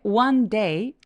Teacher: one day 둘다 강세를 살짝 주세요